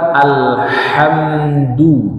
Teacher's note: ha itu tempat keluarnya di tengah tenggorokan